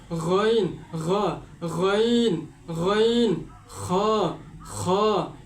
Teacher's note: একেবারে হলকের শেষ ভাগ থেকে গইন আর খ উচ্চারিত হয়